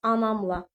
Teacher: Lalə vurğu qəbul eledyə bilmədiyi üçün təbii ki, avtomatik burda vurğu anam, yəni ikinci hecanın üzərinə düşmüş olur